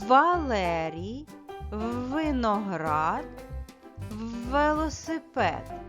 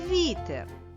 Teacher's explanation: яке слово зайве у цьому ряду це слово вітер тому що всі слова у цьому ряду починаються з твердого звука в а слово вітер починається з пом'якшеного звука в